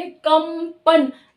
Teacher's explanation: अपने आप ही म की साउंड आ रही है, क्योंकि पांचवा इसका वर्ण म है, तो अपने आप ही ऑटोमेटिकली म की साउंड आ रही है, क्योंकि ये पांचवा वर्ण है।